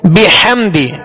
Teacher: ہا کو وسط حلق سے ادا کریں گے